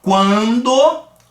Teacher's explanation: o u vai ser a semivogal